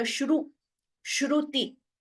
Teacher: the first letter, Shru, Shruti, Ukara is heard, like the Swara U.